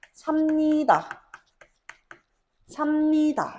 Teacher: 뒤에 있는 비읍 니은이 앞에 있는 비읍에 종성에 있는 비읍에 영향을 주면서 비읍이 미음으로 발음될 수가 있습니다.